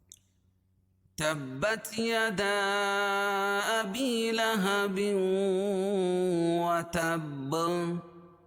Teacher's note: وتب با جو ہے، وتب تا کو با میں ملائیں گے اور با پر جزم آ جائے گی۔ تو یہاں قلقلہ ہوگا